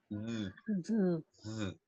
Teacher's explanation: O sea, nosotros usamos la D, el sonido es una D interdental. O sea, vamos a usar la lengua entre los dientes. No vamos a decir D, sino que vamos a decir D, D, sí.